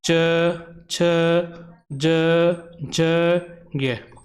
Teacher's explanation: इन वर्णों का जो उच्चारण स्थान होता है वह तालू होता है